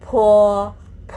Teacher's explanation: จะต้องมีลมพ่นออกมานิดนึงนะคะ